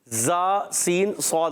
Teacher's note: है अब इनको सीटी से अदा करेंगे इसमें क्या होता है जबान की बिल्कुल बारीक नोक और नीचे और ऊपर के दांतों के अंदरूनी किनारे जा सीन सद अदा होता है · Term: सीटी वाले र्फ